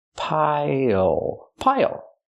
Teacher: Pronunciation, not pile, but pile. Use the dark L at the end. It changes the vowel.